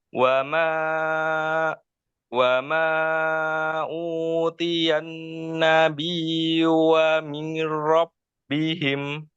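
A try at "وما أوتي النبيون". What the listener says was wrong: nah masih ya, masih masuk hidung. Wa ma utiyan nabiyyuna min rabbihim. Eh, masih masuk hidung. Utiya. sempurnakan dulu cara pengucapan domah. Dengan memonyongkan kedua bibir. U, u, u. U. Kayak bunyinya itu huruf U. U.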